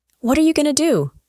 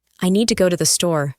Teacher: to becomes t, and you becomes ya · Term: reductions and weak forms